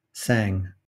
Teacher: We've got a bilabial nasal M, we've got an alveolar nasal N, and we've got a velar nasal, which we call engma